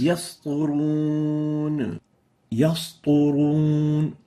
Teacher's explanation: And the third common mistake for the sin is velarizing the sin to the level that it would sound as if it is a sad.